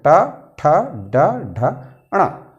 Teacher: मूर्धन्य में जीभ का जो अंतिम नुकीला वाला हिस्सा है वो मूर्धा यानी कि मसूड़े को छूता है, तब हम इस वर्ण का उच्चारण कर पाते हैं।